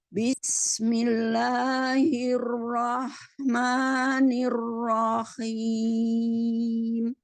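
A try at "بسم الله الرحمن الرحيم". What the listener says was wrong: Coba lagi Rahman. Rahman. H-nya lebih naik. Roh lebih tinggi. Roh dikeluarin dari anak teka itulah. Dari lak-laan apalah itu bahasanya. Jadi suaranya lebih pedas H-nya. Nah, soalnya kalau tadi masih roh, jadi masih hembus dari bawah jadinya.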